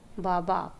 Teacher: ओष्ठव्य व्यंजन कहते हैं, जिसमें होठ हमारे टच होते हैं आपस में।